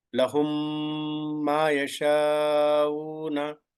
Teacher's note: When I am saying mim sakin, I touch the lips and hold it for 2 units. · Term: idgham